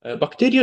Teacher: Bakteriya sözündə vurğu iya hissəciyindən əvvələ düşür. Yəni ikinci hecəyə.